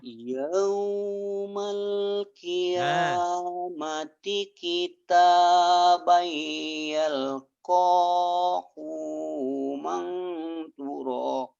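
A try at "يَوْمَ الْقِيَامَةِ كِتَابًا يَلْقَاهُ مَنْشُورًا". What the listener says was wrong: Ho-nya pendek. Ho-nya pendek. So-nya panjang tertukar. Yaumal qiyamati kitabayal qahu mansyura. Karena Bapak pengucapan ini selalu cepat. Maksudnya Bapak selalu ngucapinnya gini.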